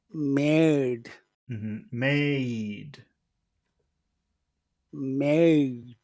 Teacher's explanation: made is very long, especially because of the D, but also it's an important word.